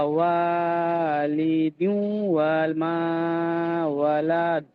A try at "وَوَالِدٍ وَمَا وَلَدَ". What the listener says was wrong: জি, মাশাল্লাহ, শেষে ওয়ালাদ টান হবে না, ওয়ালাদ।